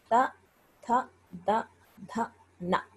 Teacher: ఆ 4వ వర్గాక్షరాలన్నీ కూడా పలికేటప్పుడు దంతాల దగ్గర మాత్రమే తగులుతుంది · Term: దంత్యాలు